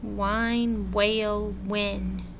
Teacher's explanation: We don't hear the H. All we hear is the W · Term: silent